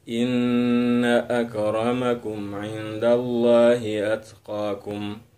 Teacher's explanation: Cara bacanya ditahan selama 2 ketukan. Jadi n-nya itu ditahan dua ketukan. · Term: gunnah musyaddadah